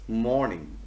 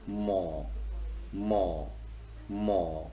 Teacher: the vellum is lowered and air does not get sufficient space to come out through the mouth and the facing obstacle it comes through the nose so when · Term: nasal sounds